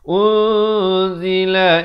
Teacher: Tapi bila datang zai, jadi bunyinya samar di antara nun dan zai. 2 harakat. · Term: ikhfa hakiki